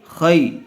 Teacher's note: خا یا زبر خی، یا ساکن سے پہلے زبر آیا ہوا ہے، اس لیے یا لین کا قاعدہ ہوگا، اس کو نرم آواز سے جلدی ادا کریں گے۔